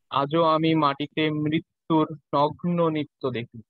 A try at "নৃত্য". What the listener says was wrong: নৃত্য না, নৃত্য, নৃত্য, এন আই যদি হয়, নৃত্য, আপনি যেটা উচ্চারণ করছেন এন আই টি টি ও, নৃত্য, আমি বলছি এন আর আই টি টি ও, নৃত্য। তাহলে এই যে ইকারের উচ্চারণটা আমাদের ঠিক মতো করতে হবে।